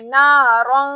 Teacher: आवाज को नाक में छुपा लेना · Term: इफा